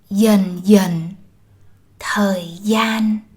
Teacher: For example, words like and. The initial consonants D and GI are pronounced as y, the southern way, while the final consonant n is pronounced the northern way.